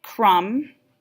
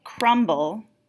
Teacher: you do not hear the B in crumb, but in the word crumble, you hear the B